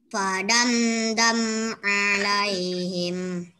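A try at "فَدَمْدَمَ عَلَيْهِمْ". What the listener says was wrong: Sebenarnya padam dama. Ini harkatnya fathah ya. Ini harkatnya fathah. Padam dama alaihim. Oke, yang ini tidak dengung ya. Mim bertemu dal tidak dengung.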